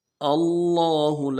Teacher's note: لفظ اللہ کے لام کے اوپر کھڑا زبر ہے، اس کو کھینچیں گے، ہاں کو نرم سے ادا کریں گے.